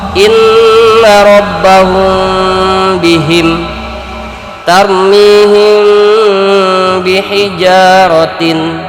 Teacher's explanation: Ikhfa syafawi yaitu apabila mim mati bertemu dengan huruf ba, dibaca dengan sedikit dengung.